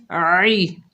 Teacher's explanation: عین کے نیچے زیر ہے، بغیر کھینچے پڑھیں گے، عین کو حلق کے درمیان سے ادا کریں گے